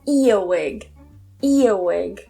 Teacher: in British English, we don't normally pronounce that R